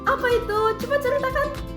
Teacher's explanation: menjawab dengan nada penasaran dan naik di akhir